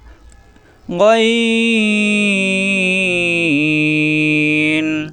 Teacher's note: আইন কণ্ঠনালীর মাঝখানে চাপ দিয়ে 4 আলিফ টানতে হবে। আইন গয়েন কণ্ঠনালীর শেষাংশ থেকে মোটা হরফ, জবর আসলে আকার প্রকাশ পায় না।